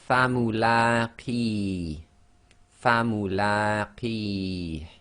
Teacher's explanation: So the la is 2 long, and they've indicated that with the short dagger alif, and it's in that brown again.